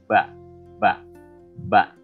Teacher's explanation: huruf Ba, tempat keluar hurufnya adalah di antara dua bibir. Jadi dengan mengatupkan dua bibir.